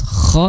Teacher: itu makhrajnya di tenggorokan bagian atas kho disertai sedikit suara ngorok ko ya nah perbedaannya kalau ha itu bersih.